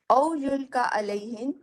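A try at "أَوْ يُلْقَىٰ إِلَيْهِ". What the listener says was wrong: الیہ، الیہ پہ اور علیہ میں فرق ہو جاتا ہے، اب الیہ پہ تھوڑا سا دھیان دیں، الیہ۔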